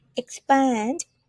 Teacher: So as above, and then we have two syllable expand. So you need to put the stress on the second one.